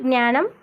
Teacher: ముందు జ్ఞానంలో మనం అనునాసికమైన జ్ఞా అనేది ఉపయోగించాం